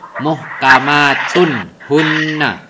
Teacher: Jadi harus terang, tidak samar, tidak dengung dan lain-lain. Itu harus terang. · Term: Izhar